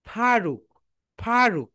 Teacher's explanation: উপরের দাঁত নিচের ঠোঁটের সঙ্গে টাচ করবে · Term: এফ